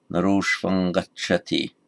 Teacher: the final M, because it's followed by a consonant, becomes anuswara